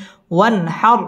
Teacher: ওয়ান হার, ওয়ান এটা হচ্ছে ইজহার, নুন সাকিনের বামে হা আসছে, হা ইজহারের হরফ, গুন্না ছাড়া স্পষ্ট করে পড়তে হবে।